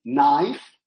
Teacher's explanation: we do not pronounce the k that precedes the sounding of the word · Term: apheresis